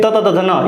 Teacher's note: जीभ ऊपर के दांत से चिपकती है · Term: दंत्य वर्ग